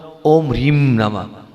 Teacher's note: नाक से जीभ, दांत, तालु, कंठ, होठ, किसी से भी उच्चारण नहीं करना। नाक से निकलेगा वो म नहीं है, वो अनुस्वार है, उसका उच्चारण नाक से ही होता है।